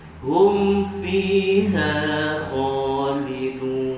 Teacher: Ha tu sama panjang dengan fi.